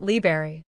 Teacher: Many of us in the rush of everyday speech drop the first R sound making it liberry. While it's a very common feature of relaxed speech, the full correct pronunciation is liber.